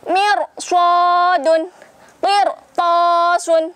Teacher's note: Meskipun sebelum ro sukun terdapat kasroh, tetapi setelah ro sukun ada huruf isti'la, tetap dibaca tebal.